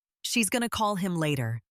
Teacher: Notice how going to and him almost disappear, but call and later are clear. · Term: stress timed language